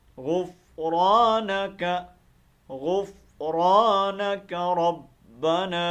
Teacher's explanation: इस काफ को लंबा नहीं करना, ये बहुत बड़ी गलती करते हैं, यहाँ पर काफ को लंबा कर देते हैं, यहाँ लंबा नहीं करना, पढ़ते हैं गुफ़रानक, का नहीं करना, बल्कि क्या है, गुफ़रानक, गुफ़रानक रब्बना।